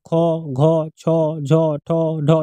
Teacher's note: যে ধ্বনি উচ্চারণের নিঃশ্বাস জোরে সংযোজিত হয় তাকে বলা হয় মহাপ্রাণ ধ্বনি